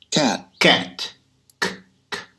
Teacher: Perceba que a gente fecha o ar, a gente prende o ar com a garganta, né?